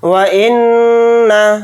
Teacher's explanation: ان علینا للہدى وان لنا للآخرة والاولى، واو کو جلدی پڑھیں گے، حمزہ کو نون کے ساتھ ملا کر پڑھیں گے، نون کے اوپر تشدید ہے تو نون کے اندر غنہ کر کے پڑھیں گے، غنہ اس طرح سے کریں گے۔